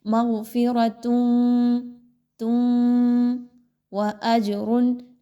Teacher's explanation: مغفرۃ وَأَجْرٌ، اب یہاں پہ بہت سارے لوگ پڑھتے ہیں مغفرۃ، نون کی آواز کو بڑا کلیئر پڑھتے ہیں، یہاں پہ آپ نے تنوین کی آواز کو نہیں پڑھنا بلکہ تا کی دو پیش کو آپ نے ڈائریکٹ واو کے ساتھ ملانا ہے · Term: ادغام